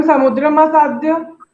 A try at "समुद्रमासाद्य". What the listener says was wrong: समुद्र मासाद्य नहीं, माँ उसमें आधा है, पूरा स्वर होना चाहिए।